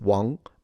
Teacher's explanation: So it's a rising tone a bit like as if you were asking a question